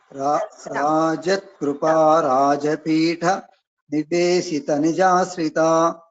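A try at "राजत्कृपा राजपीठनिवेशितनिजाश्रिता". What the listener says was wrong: So you should not stop at this Rajapitha. Rajatkrupa Rajapitha Niveshita Nijashrita. You have to chant this together.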